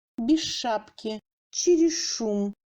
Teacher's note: Ch donne un ch dur, long.